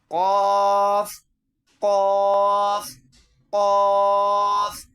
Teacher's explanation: موٹا کر کے اور حلق سے نکالیں گے اس کو قا کی آواز میں